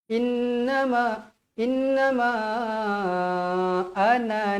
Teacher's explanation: Mad Jaiz munfasil dibaca dengan kadar empat atau lima harakat